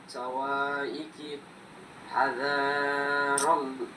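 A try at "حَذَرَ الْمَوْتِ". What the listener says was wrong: এই যে দেখো জাল, জালে কিন্তু কোনো টান নেই, অর্থাৎ কোনো মদ নেই। তাড়াতাড়ি বলতে হবে, হাজারল মাউত। হ্যাঁ, মাউতি বলতে হবে না, মাউত।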